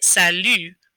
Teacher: instead of sally and your lips parting and smiling you're going to pucker up and make an u sound